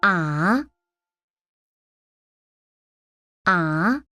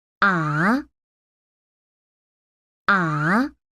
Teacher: That is the sound for the second tone. It starts normal and then rises up.